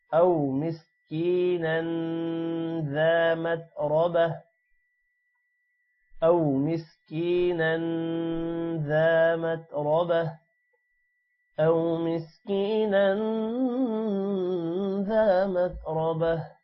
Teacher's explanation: او مسکینا ذا ذال کے بعد الف ہے تھوڑا سا لمبا ہوگا. متربہ را موٹا ہوگا اور تا جو ہے وہ ہا میں کنورٹ ہو جائے گا